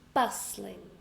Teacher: I stress the first one. And there is a silent t.